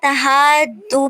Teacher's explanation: مد متصل ہو رہی ہے، بڑی مد ہو رہی ہے، اس کو ہم نے 6 الف کے برابر لمبا کرنا ہے